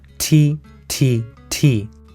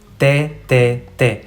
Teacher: In Spanish, our tongue actually touches our teeth.